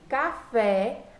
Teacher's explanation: quando eu pronuncio café, a sílaba mais forte é o fé, é a parte que está em vermelho.